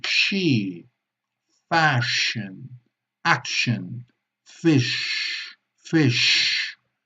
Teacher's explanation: la punta de la lengua se sitúa todavía más atrás que para la S. Tenemos que ir más hacia atrás y podemos ayudarnos echando un poco hacia adelante los labios, presionando hacia adelante ambos labios y conseguiremos el sonido sh, ¿ok?